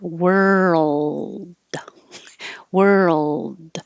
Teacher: the movement between the R to the L while you keep making voicing is what creates that sound